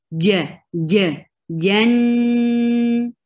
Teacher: jim has very clear shadid sound, which is you are blocking this makhraj right away, and no flow of breath or sound should flow.